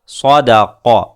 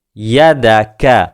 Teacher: کاف میں اور قاف میں ہمیشہ فرق کو واضح کریں۔ قاف تھوڑا حلق کی طرف سے ادا ہوتا ہے جہاں ہمارے تالو کا نرم حصہ ہوتا ہے، اور کاف تھوڑا سا آگے سے ادا ہوتا ہے جہاں ہمارے تالو کا سخت حصہ ہوتا ہے